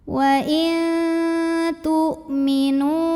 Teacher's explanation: hamzahnya punya sifat namanya syiddah, kuat bunyinya ya. Makin ditekan makin gak keluar bunyi.